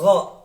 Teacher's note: Huruf gha itu keluar dari tenggorokan, ya, bukan go, tapi gha.